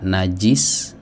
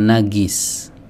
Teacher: Jadi yang keluar itu dari tengah lidah bukan dari tenggorokan. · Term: huruf jim